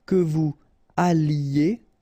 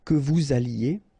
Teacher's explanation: I don't make the liaison just for you to listen carefully.